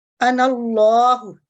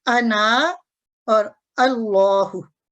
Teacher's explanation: मुतहरिक और मुशद्दद के दरमियान जो खाली अलिफ है ये नहीं पढ़ा जाएगा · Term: वस्ल